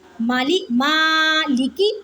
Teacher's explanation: لام زیر لی، کاف زیر کی، مالکی، لام اور کاف کو بالکل نہیں کھینچنا کیونکہ ان کے اوپر حرکت ہے